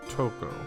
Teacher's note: with a long O sound similar to toco with a slight emphasis on the first syllable